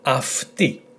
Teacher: the combination is pronounced 'af', not 'ai', not 'av', but 'af'